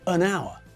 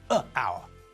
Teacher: the word our sounds like it starts with an O not an H